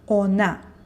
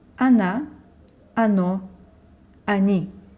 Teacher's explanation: она, оно, and они start with O vowel, but it is pronounced as A because it's not stressed. So it would be wrong to say ona.